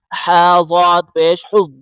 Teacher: یا زبر یا حا کو ضاد کے ساتھ ملائیں حا کو حلق سے نکالیں